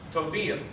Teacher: Just one L is exactly like English, we would have that L sound. Two L's in Spanish is always sounded as a Y. So that makes a ya sound.